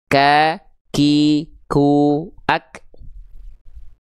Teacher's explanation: keluarnya hanya berupa percikan nafas saja